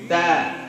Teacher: Ta dari ujung lidah ketemu dengan pangkal gigi atas ya, gigi seri tentunya ya. Ta tidak keluar, tidak digigit, tidak juga di dalam ya, di gusi apalagi di langit-langit, tapi di pangkal gigi kena.